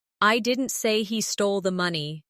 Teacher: In the first one, the stress is on I, meaning maybe someone else said it.